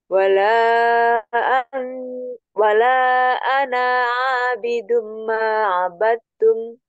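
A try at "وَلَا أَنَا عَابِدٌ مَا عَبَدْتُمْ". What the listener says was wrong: Baik, ini dibacanya pendek ya. Wala ana abidum. Ini namanya sofir. Ya, bukan sofir, apa sifar. Nah, kalau ada tanda bulat seperti itu tandanya tidak dibaca panjang. Wala ana tidak dibaca ana, tidak.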